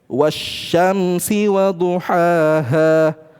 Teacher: Lamnya tidak dibaca langsung dilebur ke syin ya. Lam dengan syin punya kedekatan ya.